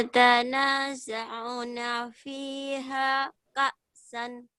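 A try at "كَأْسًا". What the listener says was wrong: Ka'san dihentikan jadi ka'sa. Yatanaza'una fiha ka'sa. Yatanaza'una fiha ka'sa.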